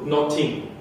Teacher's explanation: notin with a t there instead of a th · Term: stop pronunciation